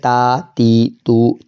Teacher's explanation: जुबान की नोक ऊपर के दो दादों की जड़ में